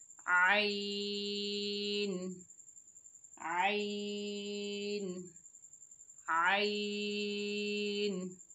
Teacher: आइन हलक के दरमियानी हिस्से से अदा करेंगे। जहाँ से हमने हा को अदा किया था वहीं से हमको आइन को भी अदा करेंगे।